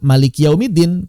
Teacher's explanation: Contoh yang paling fenomenal, Maliki Yaumiddin, tidak ada tanda, bukan tidak ada tanda, tidak ada huruf madnya. Tapi kita baca panjang.